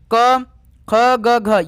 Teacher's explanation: जिसका उच्चारण स्थान कंठ से होता है वो कौन क वर्ग है